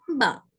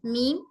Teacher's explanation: बा बोलते वक्त नाक में से आवाज नहीं आती है मीम बोलते वक्त नाक में से आवाज आती है